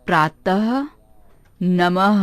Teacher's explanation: इसे बोलते समय हर जैसी आवाज आती है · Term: विसर्ग